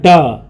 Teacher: उच्चारण में जीभ ऊपर उठ कर के झटके के साथ नीचे आए